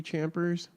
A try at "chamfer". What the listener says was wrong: Chamfer. Fur. You said chamfer. No, it's an F. CHAMFER.